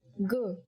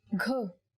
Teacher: Next, let's take a look at g, which is the same as the sound of the letter G in the English word game. Yes, when you say g without aspiration, you get g. But when you say it with aspiration, you get gh.